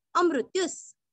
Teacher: मृत्यु का त्यु दीर्घ नहीं करना है हमें, मृत्यु का त्यु रस्व करना है और विसर्ग का आधा स